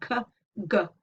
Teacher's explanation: Okay, so there aren't any velaric sounds that spring obviously to mind in English, but actually if you think about g and k, then I hope you can hear that they are velar, the soft palate. Your tongue is reaching up k, g, and hitting the soft palate